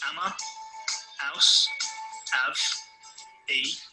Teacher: One of the key features of the Cockney English accent is the dropping of the H sound at the start of many words.